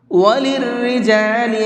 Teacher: اس را کو باریک کر کے پڑھیں گے، اس کو پر نہیں کریں گے